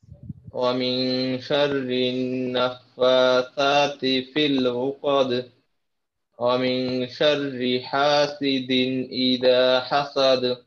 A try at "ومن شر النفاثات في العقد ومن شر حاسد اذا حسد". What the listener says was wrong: জি মাশাআল্লাহ একটু মেহনত করবেন ঠিক আছে আপনার এই যে হার উচ্চারণ তারপর কফের উচ্চারণ এগুলো ঠিক করতে হবে এই বিষয়ে দুইটা ভালোভাবে লক্ষ্য রাখবেন ইনশাআল্লাহ ঠিক আছে ইনশাআল্লাহ